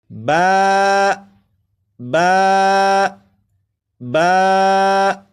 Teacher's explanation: با کو ایک الف کے برابر کھینچ کر پڑھیں گے